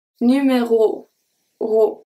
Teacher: Ro. So the O at the end is a soft O. Is an open O.